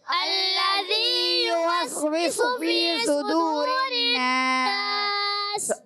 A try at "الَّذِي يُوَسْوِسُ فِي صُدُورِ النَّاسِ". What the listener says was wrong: الذي، ذال پڑھنا ہے، زا کی آواز نہیں آنی چاہیے.